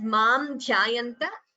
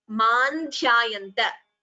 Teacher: When we combine the sandhi, it would be man dhyayanta. So anuswara, you can chant it completely as mam dhyayanta, or like we did, combine the sandhi and chant it as man dhyayanta. Both are right.